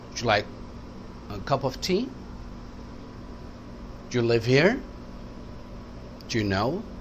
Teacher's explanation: ٹی پر اوپر گیا, اکثر لاسٹ ورڈ پہ اوپر جاتا ہے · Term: رائزنگ انٹونیشن